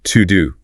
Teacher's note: an almost invisible schwa sound, which is that lazy uh sound. It becomes to do >> to do.